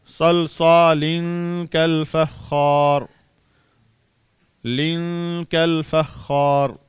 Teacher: اب ہم نے نون نہیں ادا کیا، اخفا کیا